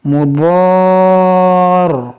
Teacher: اس دو زیر کو ساکن کریں گے اور را کو دو بار پڑھیں گے، مضار، دو بار اس کی آواز آئے گی، اس دو زیر کو ساکن کریں گے.